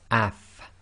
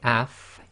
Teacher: with the sukun so this would be pronounced as AF now if you say AF you'll notice that your top teeth front teeth come together with the inner portion of your bottom lips